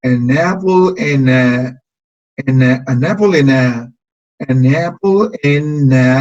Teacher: Pero como aquí tenemos otra N, este sonido de N que está aquí se va a conectar con la A que está acá.